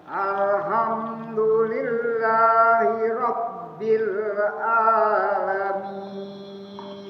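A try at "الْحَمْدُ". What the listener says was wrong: Oke, tinggal dipertajam ha dengan a-nya saja. Alha. Dibuka a. Al. Ha. Alha. Ha tengah. Alha. Bah. Dia nggak ada gor-gornya, nggak ada getarannya dia. Dia mulus saja, lewat aja nafasnya. Bah.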